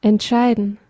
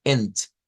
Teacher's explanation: Entonces, esto bien, yo les podría decir, mire, díganlo como ent, porque como es una E y es una E abierta